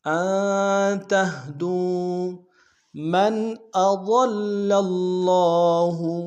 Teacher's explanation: من میں نون ساکن ہے، یہاں اظہار کریں گے